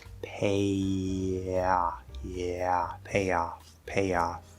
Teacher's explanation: as we leave that A position, we're gonna sort of peel the tongue down, so we kind of hit that Y sound very lightly, not fully up in the position. We're going to peel it, sort of peel it off as we open down into ah.